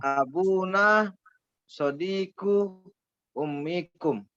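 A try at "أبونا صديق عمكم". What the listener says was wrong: Itu bukan itu. Kalau ibu itu pakainya hamzah, bukan ain itu ya. paman itu. Sodiku ammi.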